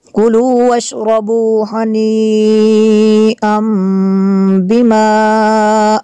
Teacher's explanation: اور ڈبل زبر کے بعد با ہے تو یہاں پہ اقلاب ہوگا، نون جو ساکن ہوگا تنوین کا اس کو میم سے بدل کے پڑھیں گے